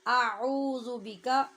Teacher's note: ذال میں سیٹی کی آواز پیدا نہیں ہوگی اور عین وسط حلق سے ادا ہوگی۔ یہ حمزہ کی آواز ہے اور یہ عین کی آواز ہے۔